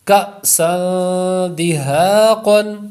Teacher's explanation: حمزہ ساکنہ ہے اس لیے جھٹکا مار کر پڑھیں گے